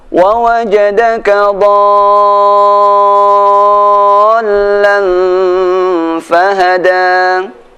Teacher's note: ada tanda bendera bertemu dengan tasydid panjang 6 harokat